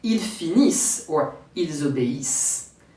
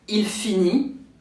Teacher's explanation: Why ils obéissent, they obey, ends with the S sound? Because as for the first group verb, French never pronounce the final ENT. So here, I drop the ENT and ends with the previous sounds.